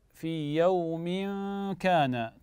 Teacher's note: اذا هنا التنوين حكمه الاخفاء بغنه